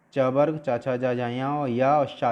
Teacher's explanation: ये तालु से बोले जाएंगे। बोल के देखोगे जीव तालु से टकराएगी, इसीलिए इनको तालव्य भी बोला जाता है।